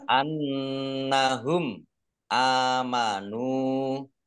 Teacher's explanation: nun tasdid dibaca gunah atau mendengung, ditahan 2 harokat.